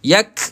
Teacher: huruf kaf tahan dulu kemudian lepaskan angin. Yak lepaskan angin tu angin yang sedikit percikkan sahaja. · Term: qalqalah sughra